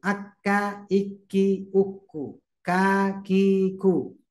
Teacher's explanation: satu tempat ee dengan Q hanya saja dikit maju